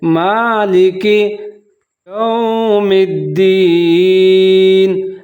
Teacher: اب یہاں میم کے اوپر کھڑی زبر ہے تو اس کو تھوڑا سا لمبا کر لیتے ہیں